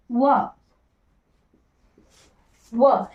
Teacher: दंत ओष्ठ वर्ग में आता है, एक ही है जिसे दंत और ओष्ठ की सहायता से बोला जाता है